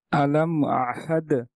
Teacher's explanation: মিম সাকিনের পরে এখানে হামজা হয়েছে গুন্না ছাড়া আমরা স্পষ্ট করে পড়বো